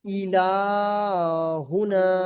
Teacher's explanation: লামটা টান হবে আর নুন আলিফ টান হবে না